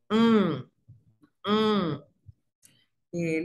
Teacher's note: La nasal dental alveolar es donde el ápice de la lengua reposa en los alveolos.